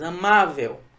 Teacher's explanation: veja que a sílaba tônica não é a última é a penúltima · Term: paroxítona